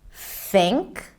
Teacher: And when it comes to voicing, we have two different THs. One is the voiceless TH, or some people call it the soft TH, where it's just air coming out between the tongue and teeth